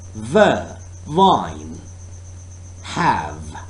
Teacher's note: Air is forced to the upper teeth and lower lip. Again, this is a labiodental sound.